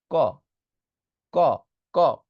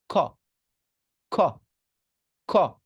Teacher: কটাকে বাতাস সহ বের করবেন ধাক্কা দিয়ে,